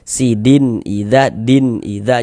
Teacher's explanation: dibaca jelas bunyi nun sukun atau bunyi tanwinnya itu kemudian tidak didengungkan sehingganya dia dibaca pendek saja gitu. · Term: izhar halqi